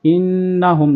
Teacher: نون کے اوپر تشدید ہے تو یہاں پر غنہ ہوگا